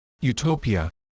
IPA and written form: juːˈtoʊpiə (utopia)